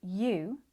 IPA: juː